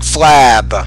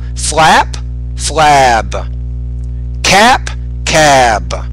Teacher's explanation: when the word ends in a voice consonant like a B, the vowel will be longer, like flab.